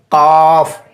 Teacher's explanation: सबसे आखिर में जो ज़बान की जड़ है, ये ज़बान की जड़ कौवे से लगती है तो इससे क़ाफ़ अदा होता है। आप इसको अदा कीजिए, क़ाफ़, तो लफ्ज़ क़ाफ़ वहीं से अदा हो रहा है।